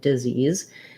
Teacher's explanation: hear it like does ease i say it like disease and then we have the ease like the word ease we have a tense e and a z sound